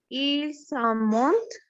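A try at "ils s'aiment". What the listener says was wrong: Ils aiment. el sem, porque acuérdate que cuando se conjuga en tercera persona, la sílaba ENT no se pronuncia.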